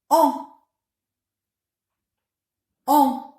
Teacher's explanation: Ensuite, ouvrez bien la bouche et en gardant la partie postérieure de la langue abaissée, dites « en ». L'air passe ainsi par la bouche et par le nez. Les lèvres s'arrondissent légèrement. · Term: voyelle nasale